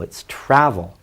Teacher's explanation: The emphasis is on the first syllable.